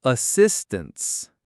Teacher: And assistance, stress on sis. Assistance. The first A and the A in tense become schwas. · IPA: /ə/